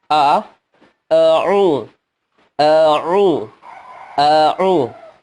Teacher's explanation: Hamzah berada di pangkal tenggorokan, dia huruf yang kuat dan harus jelas.